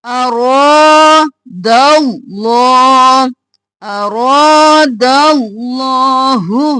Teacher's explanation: اور رو کھینچेंगे، جلدی سے، رو کو 1 الف کے برابر، دال کو لام میں ملائیں گے موٹا کرتے ہوئے